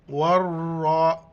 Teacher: گے، واو را زبر ور، را کڑا زبر را، ور را، را کو موٹا پڑھنا ہے